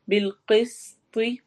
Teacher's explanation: بالقسط قوف کو موٹا، سین کو سیٹی کے آواز کے ساتھ، اور طوا میں ہم رک رہے ہیں تو طوا پہ قلقلہ کرتے ہوئے رکنا ہے · قائمن مد، اور آگے پھر مم میں اقلاب ہو رہا ہے. بالقسط قوف کو موٹا، سین کو سیٹی کے آواز کے ساتھ